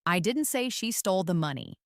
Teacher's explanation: First, emphasize the word I. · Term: emphasis